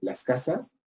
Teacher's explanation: De Ciudad de Guatemala, ahí lo que se impuso fue el mantenimiento de la S sibilante